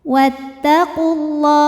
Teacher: Lam pada lafaz Allah atau lam jalalah dibunyikan secara tafkhim. Karena huruf sebelumnya berbaris dhammah, maka dibacanya tebal.